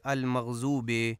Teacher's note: المغضوب میں ضاد کو زے پڑھا جاتا ہے اور اس کی غلط ادائیگی یوں کی جاتی ہے المغضوب، جو کہ درست نہیں ہے، اور درست ادائیگی غیر المغضوب علیہم ہے۔